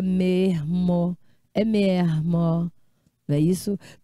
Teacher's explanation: tem aquele chiado carioca